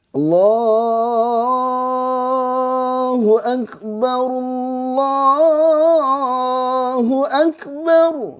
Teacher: dua harakat dibaca lebih itu enggak masalah ya seperti Allahu akbar Allahnya itu harusnya dua harakat kan panjang ya boleh dipanjangin sampai sepanjang-panjang